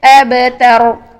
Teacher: साकिन हालत में बा को हम बा की आवाज को हिला देते हैं अपने मखर पर टच करने फौरन बाद बा की आवाज हिल